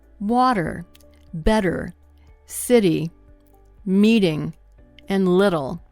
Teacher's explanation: Americans quickly tap the tongue against the roof of their mouth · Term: flap T